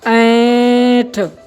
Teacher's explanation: ऐंठ को उच्चारण करने के लिए हमें नाक का इस्तेमाल करना पड़ रहा है